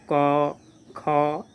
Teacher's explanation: क का उच्चारण कंठ से करेंगे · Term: कंठे वर्ण